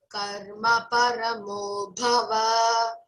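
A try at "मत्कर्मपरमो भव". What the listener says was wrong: Va, don't elongate.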